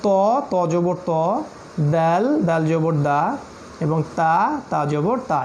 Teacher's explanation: এই তা দাল ত এটা কিন্তু একই জায়গা থেকে, অর্থাৎ দাঁতের পিছনে জিহ্বার ধাক্কা দিয়ে বের করতে হবে।